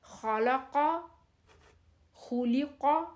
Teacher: اب دیکھیں خا بھی موٹا ہے، قاف بھی موٹا ہے۔